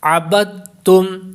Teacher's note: طور پر جو با ہے جب ہم اس کو پڑھیں گے دال کو، یہ تا میں مکس ہو جائے گا، اس میں داخل ہو جائے گا، ملا دیا جائے گا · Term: ادغام تام